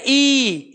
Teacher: सर आपने तो बहुत सारे स्वर बताए ये, अब ये देखो जब हम कह रहे हैं हम प्रैक्टिकली देखेंगे, ई जो वर्ण है इसका हम उच्चारण करें ई, तो अगर हम शीशे के सामने खड़े हैं ना, या हम खुद फील भी कर सकते हैं, जब हम ई का उच्चारण कर रहे हैं तो जीभ जिससे हम नमक चखते हैं, जो आगे वाला हिस्सा जीभ का है वो वाला टच करता है। और ऐसे ही फिर हम करेंगे ई, इसको थोड़ा लंबा खींच देंगे, ठीक है।